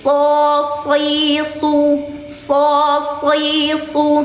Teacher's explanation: Pangkal lidahnya dinaikkan. Jadi tetap makhrajnya tetap di ujung tapi pangkal lidahnya juga bersamaan dinaikkan. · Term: huruf shad